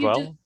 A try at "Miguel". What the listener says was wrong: yeah, I think you're doing like the U wrong, or I don't know, but I think it's Miguel. Miguel.